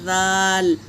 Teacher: ज़बान के किनारे को ज़बान का किनारा ऊपर के दांतों से लगाएंगे तो ये हरूफ अदा होगा